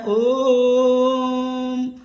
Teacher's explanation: ओ में 2 मात्रा से ऊपर का समय लगा, इसे हम प्लुत स्वर कहते हैं